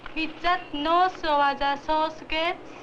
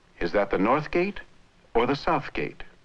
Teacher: The question is characterized by a rise at the end of the sentence. · The normal intonation has a drop at the end